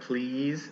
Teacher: for the long ones like please and seat you just have to keep the sound like a second longer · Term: length of the vowel